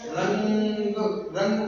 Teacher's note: अनुस्वार को बोलते समय हमारी नाक से हवा ज्यादा निकलती है और मुह से हवा कम निकलती है